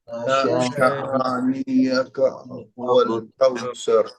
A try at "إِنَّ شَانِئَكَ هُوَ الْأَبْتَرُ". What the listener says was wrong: نیا کا نہیں، نیئک. إن شانئك هو الأبتر. إن شانئك، إن شانئك هو الأبتر.